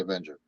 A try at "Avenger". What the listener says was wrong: Black Dahlia Avenger. like one word, Avenger, not avenge her.